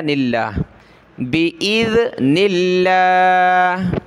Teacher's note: حمزہ کو ذال کے ساتھ ملایا اور نون کو لفظ اللہ کے ساتھ ملایا